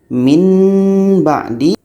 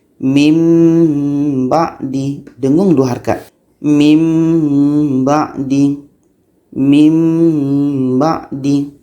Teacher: Nun mati bertemu ba. Nun pun kita tukar kepada bunyi mim.